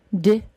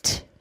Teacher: the D sound is the voiced sound, and the T sound is the unvoiced sound